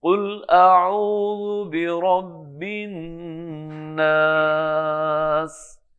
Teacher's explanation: اچھا یہاں پہ اگر ہم وقف کرتے ہیں تو اس مد پہ مزید مد کر سکتے ہیں. الف مد ہے، اس کو ہم تھوڑا سا اور بھی کھینچ سکتے ہیں. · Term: مد عارض وقفی